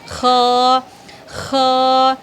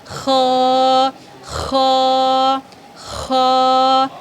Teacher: خا حلق کے اوپری والے حصے سے ادا ہوئی